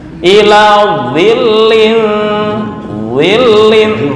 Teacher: Dha sendiri, dzal sendiri. Dzal istifal, dha isti'la. Ya, tebal.